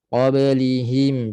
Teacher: Hi sederhana sahaja. Rasa di pangkal tekak kita. Jangan over qablihim.